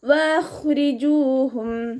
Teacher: ഇദ്ഹാർ ഷഫവി. വഖ്രിജൂഹും വാവ് ഉച്ചരിക്കുമ്പോൾ ചുണ്ടുകളെ സർക്കിൾ ചെയ്ത് പിടിക്കുക